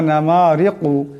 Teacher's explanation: ওয়া নামারিকু, এখানে যে রাটি আছে, এই রাটিকে পাতলা আওয়াজে পড়তে হবে। রার নিচে জের আসছে।